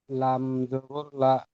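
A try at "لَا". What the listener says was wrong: লামটা ক আলিফ টান দিয়ে পড়তে হবে, লামটা ক আলিফ টান দিয়ে পড়তে হয়। 3 আলিফ টান দিয়ে বলেন।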